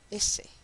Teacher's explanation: La que acaban de escuchar ustedes ahora, la lengua se pone de manera cóncava hacia la región alveolar, y en la región, perdón, y en la S latinoamericana, que es la S predorsal, la podemos llamar si quieren la S normal, la punta de la lengua está en los dientes de abajo